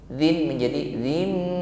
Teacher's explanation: bunyi kasrah tanwin dzin langsung kita ganti dengan bunyi mim. Dzin menjadi dzim serta ditahan sehingga ada bunyi dengung. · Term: iqlab